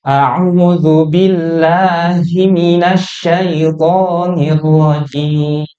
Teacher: jimnya itu boleh panjang tuh, jim. Kita sepakati empat harokat atau empat ketukan